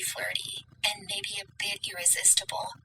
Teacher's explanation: I mean that vocal fry there with the flirty